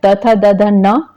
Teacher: त थ द ध न जो है दंत से उच्चारित होता है